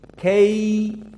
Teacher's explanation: ya Sakinah sebelumnya fathah dinamakan madlin dua harakat